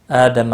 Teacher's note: آدم حمزہ کے اوپر کھڑی زبر ہے، ایک الف کے برابر کھینچ کر پڑھیں گے